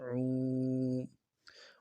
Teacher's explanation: الٹا پیش میں ہونٹوں کو خوب گول کرنا ہے اور ایک الف مدار میں کھینچنا ہے